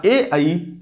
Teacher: कंठ और तालु के मिश्रित भाग से जो वर्ण उच्चारित होते हैं वो ए है और आई है। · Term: कंठ तालु